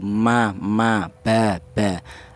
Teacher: Yaitu yang mana makhraj kedua bibir itu ditempati tiga huruf, yaitu huruf mim, huruf ba, dan huruf wau. Untuk huruf mim dan huruf ba yaitu dihasilkan dari dua bibir yang rapat. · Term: 2 bibir yang rapat